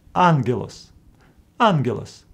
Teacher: Greeks came with a solution to pronounce the first gamma as n